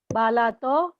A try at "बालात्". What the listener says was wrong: पंचमी में बाला तो नहीं, तो अर्धो. बालात बालाभ्याम बालेभ्यो.